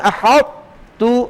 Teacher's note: وبین الاطباق من احط، آپ جب احط کلمہ پڑھیں تو اطباق کو تا میں خوب واضح کریں